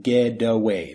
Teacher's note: The T becomes more of a D, and it's blended together.